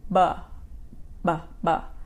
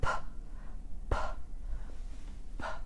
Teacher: So the P sound is more like air puffing.